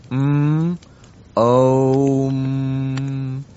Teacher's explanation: it starts with an open mouth. Ah, and then you slowly close the mouth. Ooh. And then all the lips are closed. M. Now all our sounds are produced in this way from the open mouth to the closed lips and everything in between the different sounds come in between.